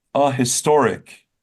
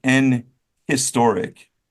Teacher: And there's no reason to say N historic. If you're pronouncing the H, it would be a historic, not N historic.